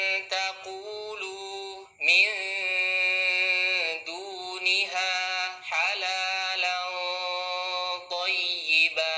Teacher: ikhfa ta dal to termasuk ikhfa aqrab karena makhrajnya yang dekat dengan nun